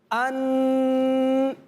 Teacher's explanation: अन, ये भी गुन्ने की आवाज़ है। अन, सख्त आवाज़ पूरी नाक से निकल रही है